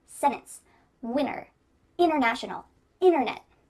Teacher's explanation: when we're speaking quickly, you're going to hear us completely cut out that T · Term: glottal T